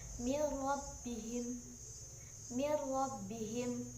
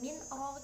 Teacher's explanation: tidak dengan mendengung akan tetapi suara nnya langsung masuk ke roh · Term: idgam bila gunah